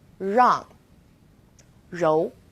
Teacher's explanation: We also have R as in rang or rou. It's quite similar to the R sound in run, but the R is a little softer. So try moving your tongue more to the back of your mouth.